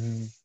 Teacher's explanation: And notice that only for Z, your vocal folds actually vibrate. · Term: voiced